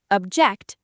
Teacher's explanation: Stress on the second syllable, verb form